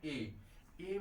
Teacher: स्थान आ का कंठ से है इ का ताल से है तो ए का उच्चारण स्थान हो जाएगा कंठ ताल से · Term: संयुक्त स्वर